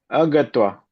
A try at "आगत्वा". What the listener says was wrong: आगत्वा। ठीक है, वो क्योंकि अगच्छत का आ बनता है, आगच्छत।